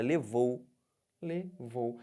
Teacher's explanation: agora eu tô partindo de quem do Ó para o u que que tá acontecendo tô descendo Então eu tenho um ditongo decrescente